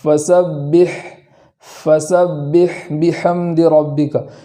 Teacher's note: پہلے کلمے کے اندر جو حا ہے اس کو آواز جاری کرنے کے ساتھ پڑھیں گے اس طریقے سے، فَسَبِّحْ، فَسَبِّحْ بِحَمْدِ رَبِّكَ۔